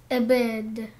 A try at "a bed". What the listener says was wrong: Только ты тянешь a bed, a bed.